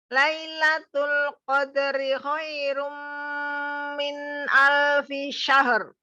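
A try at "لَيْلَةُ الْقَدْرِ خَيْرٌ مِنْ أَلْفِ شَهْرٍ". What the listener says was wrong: Ya, dihaluskan lagi kol-kola dalnya di tengah. Qadri khairum, qadri. Lailatul qadri khairum min alfi syahr. Syahr.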